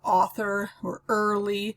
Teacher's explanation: also a two syllable foot a heavy followed by a light